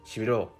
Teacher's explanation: In the word shibiro, the last syllable is higher pitched and therefore stressed, but every syllable is still pronounced for the same amount of time